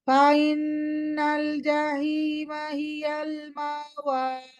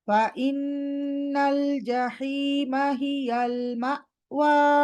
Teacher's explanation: তাহলে হামজা পুরা গায়েব হয়ে গেছে